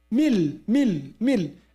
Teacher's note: Completely removing noon, replacing that with lam, and putting shadda on it. They call it idgham kamil, complete idgham. · I completely merged lam with noon. Without any, effect of noon at all.